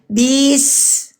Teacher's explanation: Ujung lisan kita ke gigi bawah. Ya. Teman-teman keluar napas. Berdesis mengalir panjang. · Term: huruf sin